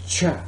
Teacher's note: In ch, the period of turbulent airstream following the stop portion is the same as the fricative sh. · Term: affricate